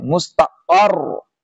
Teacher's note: جائے گا اس طرح پڑھیں گے ال مستر مستر نہیں مستقر قف کو سختی سے را سے ملائیں گے پیش کو چھوڑ دیں گے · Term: تشدید